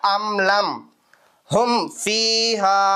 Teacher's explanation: மீமை அப்படியே உச்சரிக்கணும் எதுவுமே மாத்த வேணாம் மூக்குல மறைக்க வேணாம் குன்னா பண்ண வேணாம் எதுவும் செய்ய வேணாம் இருக்கிறதை அப்படியே ஓதிட்டா போதுமானது அதான் எதுஹார் ஷஃபவி பாருங்க